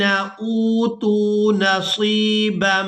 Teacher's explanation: یہاں ہم حمزہ کو واو مدہ کی وجہ سے اور تا کو بھی واو مدہ کی وجہ سے کھینچ کر ادا کریں گے، اور اس کے بعد صاد کو یائے مدہ کی وجہ سے کھینچ کر ادا کیا جائے گا۔